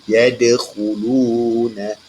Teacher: Nampak Ustaz tekankan huruf qalqalah tersebut tetapi sederhana kuat. Tidak terlalu kuat. Tidak kuat sederhana saja. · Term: qalqalah surah